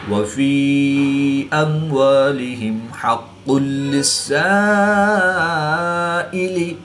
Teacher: الف مدہ کے بعد حمزہ اسی کلمے میں ہے تو یہاں پر مد متصل ہوگی. 3 سے 5 الف تک کھینچ کر پڑھیں گے